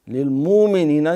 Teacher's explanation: یہ حمزہ جھٹکا ہے، پورا سختی ہوتی ہے حمزہ کو جب ساکن کو ادا کریں